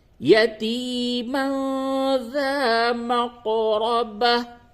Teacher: قاف میں قلقلہ کریں، تنوین کے بعد ذال ہے، اس جگہ پہ اخفا ہوگا